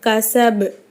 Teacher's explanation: அப்போ இங்கே நம்ம சுக்குன் வச்சு நிறுத்தணும். சுக்குன் பெற்ற பா கல்கலாவுடைய எழுத்து. அப்போ கசப் அப்படின்னு நம்ம அசைச்சி நிறுத்தணும்.